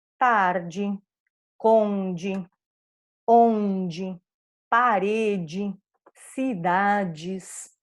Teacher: a sílaba DE final, sem acento, vai ser sempre pronunciada como DI